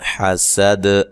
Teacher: اذا، حمزہ کو تحقیق سے، ذا الف مدہ ہے. حسد، سین کو باریک سیٹی سے اور وقف کی صورت میں دال پہ قلقلہ کرنا ہے